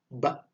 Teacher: Kalau bibir kita terbuka, ba itu dari bibir yang rapat kemudian terbuka, ba. Oke, ya.